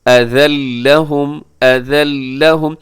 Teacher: منا ولا اذى لهم، اذى لهم یہاں تنوین کے بعد لام ہے تو یہاں بھی ادغام ہوگا، لیکن یہ ادغام بغیر غنے کے ہوگا